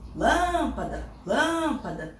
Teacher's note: não é nem último nem a penúltima mas é a antepenúltima sílaba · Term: proparoxítona, sílaba tônica